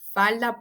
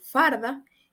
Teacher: el fenómeno del rotacismo que es cuando hacemos ese cambio de la L A la r